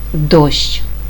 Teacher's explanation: ми чуємо твердий приголосний д голосний о твердий приголосний ш та твердий приголосний ч тверді приголосні ш ч які стоять поряд записуються за допомогою букви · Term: сполучення звуків шч